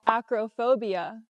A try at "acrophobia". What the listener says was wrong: The word is not pronounced acrophobia. The O in the middle does not make the long O sound like no and go. It's not acrophobia. It's pronounced acrophobia. The O in the middle is pronounced with the short sound like cup and up. Acra. Relaxed and closed. Acra. Acrophobia is the correct pronunciation, and it means a fear of heights.